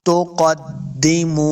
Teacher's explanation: وَمَا تُقَدِّمُوا، قاف کو موٹا پڑھنا ہے، قاف حروف مستعلیہ سے ہے، دال کے ساتھ ملانا ہے۔ تقدموا، میم پیش واو، واو مدہ ہے، اس کو 2 حرکات لمع کر کے پڑھنا ہے